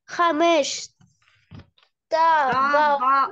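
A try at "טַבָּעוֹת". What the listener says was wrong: Табаот. Молодец.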